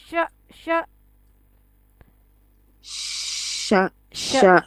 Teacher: The letter sheen is pronounced when the middle part of your tongue come in contact with what lie opposite to it from the roof of the mouth. The middle part of tongue touches your middle part of the roof of the mouth.